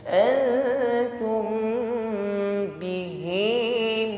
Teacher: mim sukun bertemu ba, didengungkan. Ya, hukumnya ikhfa syafawi, bibir rapat. Bibir rapat tapi jangan ditekan terlalu kuat.